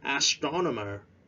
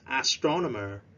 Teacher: Remember to stress at the second syllable.